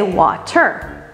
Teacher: we were using rhotic speech, and that's where we add the R in the word. We don't drop the R.